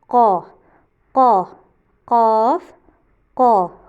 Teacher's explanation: भारी पढ़ा जाता है और सेम आवाज़ मुंह के अंदर ही रहेगी